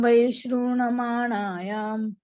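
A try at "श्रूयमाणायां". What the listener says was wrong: My thinking is that you are reciting Shruyamanam as Shrunamanayam. Shruyamanayam.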